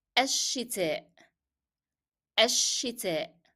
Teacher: I dropped the pronunciation of lim and I stressed on sheen because it's a shadda letter. So you will find in the transliteration column, you will find sheen written as two, because they are supposed to be two sheens here, and that's why you find shadda above the letter.